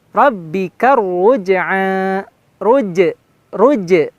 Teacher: pantulan j-nya kena ya kalau huruf qalqalah